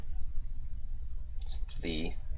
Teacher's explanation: this is the voiced labiodental fricative consonant. Non-sibilant, if you want to be specific, but that's really not important here.